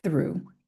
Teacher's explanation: transicionar aqui pro u, que é tipo u do português, mas é um pouco mais longo exagerado